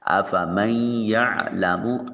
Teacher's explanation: افمن یعلم، تو آپ دیکھیں میم کو یا کے ساتھ ملاتے ہوئے بیچ میں سے جب ہم ناک میں آواز لے کے جاتے ہیں تو نون کی آواز محسوس ہو رہی ہوتی ہے، اس کو ادغام بالغنہ کہا جاتا ہے۔ افمن یعلم، عین کو وسط حلق سے ادا کریں گے